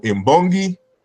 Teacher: It's really an N sound, but N turns into M in the presence of or before a voice labial, which is a bilabial, which is a B sound.